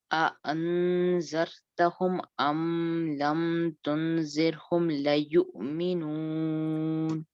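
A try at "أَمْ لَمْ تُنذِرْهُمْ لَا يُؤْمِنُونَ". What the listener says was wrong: تنذرہم، نون کا اخفا ہے، نقمہ ادھر. لا، لا لمبا کرنا بیسین، یہ حرف مدہ ہے. ام لم تنذرہم لا یؤمنون.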